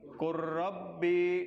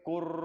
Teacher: Qur rabbi, tapi tidak boleh qur, enggak. Cukup qur rabbi ya, tanpa dengung, tanpa mantul.